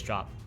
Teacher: you notice i said the drop and did like an audible p sound but usually what i would say is drop and just drop the p entirely